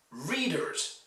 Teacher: Readers is stressed on the first syllable.